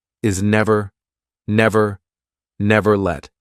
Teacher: you're going to nearly pronounce your t let get the tongue in the right position but don't release it